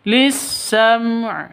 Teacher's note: mim mati bertemu dengan ain izhar syafawi jelas terang lisam begitu ya ainnya jangan dihilangkan harus disukunkan tetap dibaca lisam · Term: izhar safawi